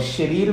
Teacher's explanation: और शरीर में जो सकार है वो तालव्य शकार है